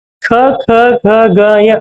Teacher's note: ಇವು ಮನುಷ್ಯನ ಕಂಠ ಭಾಗದಲ್ಲಿ ಉತ್ಪಾದನೆಯಾಗುವಂತ ಪದಗಳು. ಅದಕ್ಕಾಗಿ ಇವನ ಕಂಠ್ಯ ಅಕ್ಷರ ಅಂತ ಕರಿತೀವಿ. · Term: ಕಂಟೆ ಅಕ್ಷರ